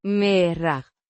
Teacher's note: with the emphasis on the first syllable